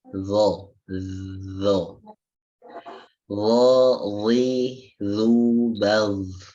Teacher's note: Huruf dha itu ujung lidah ketemu dengan ujung daripada dua gigi seri yang atas.